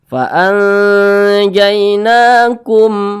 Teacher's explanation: Nah, maka karena huruf nonnya ini di atas huruf non ada alif kecil berdiri ke atas, maka huruf nonnya ini dibaca panjang. Nah, ini namanya matobi'i, panjangnya 2 harokat atau kira-kira 2 ketukan.